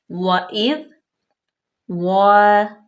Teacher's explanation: ذال جو ہے وہ ساکن ہے، ٹھیک ہے۔ اور اس کو ہم نرمے سے پڑھیں گے، بلکہ نہ کہ اس پہ سیٹی کی آواز پیدا کریں گے